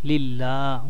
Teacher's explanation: লিল্লাহ একালিফ মাদে তবাই আছে, টেনে পড়তে হবে এবং লিল্লাহ পাতলা করে লিল্লাহ। রাব্বিল রোটা একটু মোটা করে পড়বেন।